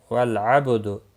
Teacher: با ساکن پر قلقلہ ہوگا۔ بالعبد، با ساکن پر قلقلہ ہوگا، لام ساکن کو ہلانا نہیں۔